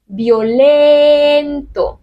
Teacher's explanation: No tiene ninguna fuerza esa I, por lo tanto no se separa.